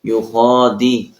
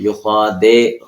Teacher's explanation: دال کو معروف پڑھیں گے زیر کے ساتھ